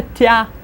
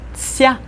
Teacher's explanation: You would have a ta, and then for when you say te and ya together, you should kind of insert a little bit of an s sound to it. Soften it and put an s sound, and you get a tsya, tsya, tsya.